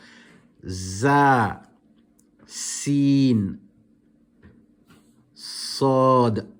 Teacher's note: These letters are pronounced with the tip of the tongue touching the edge of the lower central incisors, including the upper central incisors.